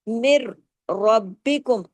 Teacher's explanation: यह बगैर गुने वाला इदगाम मिर यहां पर देखिए कोई गुना नहीं है। · اب را کو ہیوی کر رہے ہیں. کیوں؟ زبر کی وجہ سے.